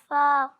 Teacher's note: جب اوپر والے دانت نیچے والے ہونٹ کے تر حصے سے لگتے ہیں تو ادا ہوتا ہے فا